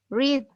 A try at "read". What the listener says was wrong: Read, right? You read something.